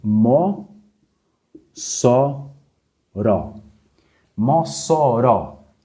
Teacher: Qual que é a sílaba mais forte é a última Então você Já identificou que essa palavra é uma oxítona vamos